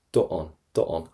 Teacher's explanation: the more you say it, the more it liaises into it, because you have a vowel and a vowel